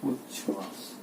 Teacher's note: त की संधि तालव्य श के साथ होती है तो त है वो च में बदल गया और श है वो छ में बदल गया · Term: तालव्य ध्वनि